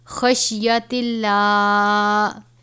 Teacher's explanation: لام سے پہلے زیر ہے، لام کو باریک پڑھا جائے گا